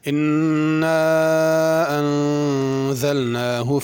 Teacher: انا پہ غنہ کرنا ہے، انزلنا اس کے نون پہ بھی غنہ کرنا ہے، اور انا میں مد ہے، اس کو کھینچ کے پڑھنا۔